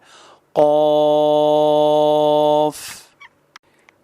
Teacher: قوف زبان کی جڑ اور اس کے مقابل کے نرم تالو سے ادا ہوتا ہے